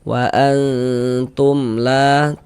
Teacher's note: Karena dia izhar, maka dibaca jelas, tidak berdenggung, maka dibaca pendek saja. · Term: izhar syafawi